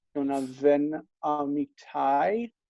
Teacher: even though we do say ben amitai, it's ven, because it comes after the vowel. Jonah ven amitai, tai instead of tav.